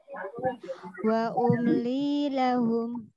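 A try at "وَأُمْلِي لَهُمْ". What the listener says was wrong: Sempurnakan mimnya. Jangan wa umli lahum, jangan. Wa umli umli jangan dia umli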